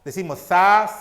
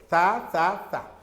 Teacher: la punta de la lengua, que se le llama ápice, se va o se aproxima a esos alveolos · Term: sonido alveolar